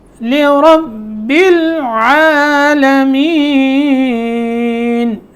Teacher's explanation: لرب با کو جب ہم نے لام سے ملایا تو یہاں قلقلے کی آواز پیدا نہیں ہونی چاہیے